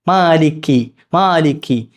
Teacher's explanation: കാഫ് എന്ന ഉച്ചാരണം വരുന്നത് തൊണ്ടയുടെ അങ്ങേ അറ്റത്ത നാവിന്റെ അങ്ങേ അറ്റത്തന്നാണ് നാവിന്റെ അങ്ങ അണ്ണാക്ക് ഉണ്ടല്ലോ നമ്മുടെ അണ്ണാക്ക് അവിടെ നിന്നാണ് വരേണ്ടത് അതിന്റെ തൊട്ടിപ്പുറത്തായി